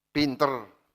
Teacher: pengucapan bunyi vokal A yang berubah menjadi E membuat kata terdengar tidak baku